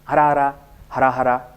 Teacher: ಆದರೆ ಗ್ರಾಮ್ಯದಲ್ಲಿ ಅರ ಮತ್ತು ಹರ ಒಟ್ಟಿಗೆ ಹೋಗ್ತದೆ, ವ್ಯತ್ಯಾಸ ಆಗೋದಿಲ್ಲ.